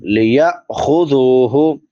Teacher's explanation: یا کے بعد حمزہ ساکن ہے تو یہاں پہ جھٹکا دیں گے